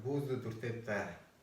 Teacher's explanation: Другое дело, что здесь она звучит ближе к «та», поскольку она, опять же, соприкасается с буквой «б» в конце слова «дуртеп». Буква «б» в конце слова «дуртеп» оглушается, звучит как «п»